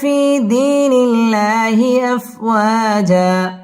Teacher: আল্লাহ শব্দের লাম বারিক হবে। নিল্লা এক আলিফ টেনে পড়তে হবে।